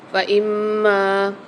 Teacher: میم کے اوپر مشدد بھی آ رہی ہے اور ساتھ اس کے مد بھی آ رہا ہے، تو اس کو یہاں پر غنہ کر کے بھی پڑھیں گے اور میم کو کھینچ کے بھی پڑھیں گے